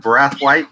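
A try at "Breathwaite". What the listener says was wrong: First of all, you said his name wrong. You said breath white, and it's breath weight.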